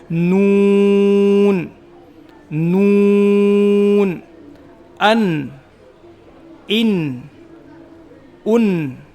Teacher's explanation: जबान की नोक ऊपर के तालू में लगेगी और होठ गोल होंगे जिससे नून अदा होगा।